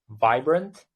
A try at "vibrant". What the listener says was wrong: You said vibrant. Because there's no like V and W in Uzbek. So in Uzbek, most of the time they're interchangeable.